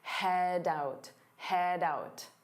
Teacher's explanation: Notice how head out combine together to sound like head out, doubt. So you hear that D sound on out